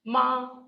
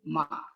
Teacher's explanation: Now, this is the high level tone. Like ma, and this is a low tone, ma.